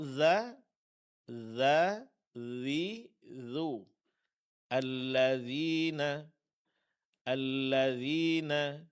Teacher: Huruf dzal tipis karena dia sifatnya istifal.